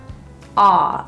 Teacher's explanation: For the ah vowel, the back of the tongue is quite low. Think of the opening at the back of your throat.